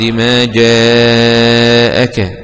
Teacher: جاءك مد واجب متصل ومد مقدار أربع أو خمس حركات وصلا